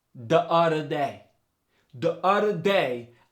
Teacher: the D replaces the voiced and the voiceless th